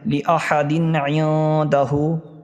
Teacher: تنوین کے بعد عین آ رہا ہے، اظہار ہوگا